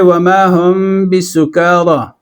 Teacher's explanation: میم ساکن کے بعد اگر با آ جائے، با، تو اس میں اخفاء ہوتا ہے، اور اخفاء مع الغنہ ہوتا ہے، اور اس کو اخفاء شفوی کہا جاتا ہے کیونکہ یہ ہونٹوں سے ادا ہوتا ہے، بعد میں با آ رہا ہے وہ حرف شفوی ہے۔